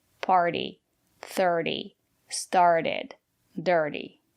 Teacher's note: rule if we have a vowel r t and a vowel the syllable after the letter T is not stressed we pronounce the letter t as a fast D